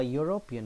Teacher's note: Here again it starts with a vowel, but it does not produce a vowel sound. European, it produces y sound. That is why we have not used n before this.